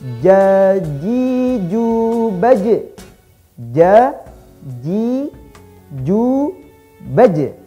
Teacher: saat sukun, baje dipantulkan dengan kuat. Tidak boleh tertahan. Baj, nah itu keliru. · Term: huruf jim